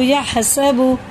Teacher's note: بڑا ہا ہے، حلق کے درمیانی حصے سے نکالیں گے